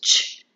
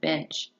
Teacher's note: The ch sound is a voiceless aphrictic sound.